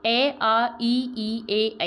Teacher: अवृतमुखी मतलब जब हम बोलते हैं तो हमारे होठों की स्थिति जो है वो बिल्कुल गोलाई में नहीं आती है।